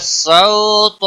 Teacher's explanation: طا حروف مستعلیہ میں سے ہے اس لیے موٹا پڑا جائے گا